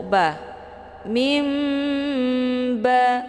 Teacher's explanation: dengan huruf ba dinamakan dengan hukum bacaan iqlab makna iqlab itu membalikkan daripada bunyi nun sukun menjadi Bunyi mim jadi yang dibaca di sini adalah mim sukun ketemu mu ba